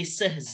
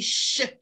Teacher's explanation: harusnya seh itu kan alveolar kan, berubah menjadi post alveolar